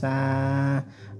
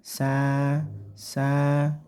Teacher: Iwat pembacaan Mad Iwat tidak pakai n lagi ya tapi sah cukup dipanjangkan satu Alif atau dua harakat atau dua hitungan